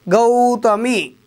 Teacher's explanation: గౌ ఎక్కువ సేపు పలుకుతున్నాం కాబట్టి గురువు అవుతుంది